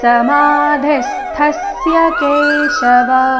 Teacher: ಇಲ್ಲಿ ಥ ಮಹಾಪ್ರಾಣ ರಸ್ವ ಇದೆ ಅದರ ಮೇಲೆ ಆಘಾತ ಕೂಡ ಸಮಾಧಿಸ್ತಸ್ಯ ಕೇಶವ ಸ್ಥಿತಧಿ ಕಿಂ ಪ್ರಭಾಷೇತ [ಸಂಗೀತ] ಸ್ಥಿತಧಿ ಸ್ಥಿಲ್ಲಿ ಥ ಥಿ ಮಹಾಪ್ರಾಣ · ಸಮಾಧಿಸ್ಥಸ್ಯ ಇಲ್ಲಿ ಥ ಮಹಾಪ್ರಾಣ ಹ್ರಸ್ವ ಇದೆ, ಅದರ ಮೇಲೆ ಆಘಾತ ಕೂಡ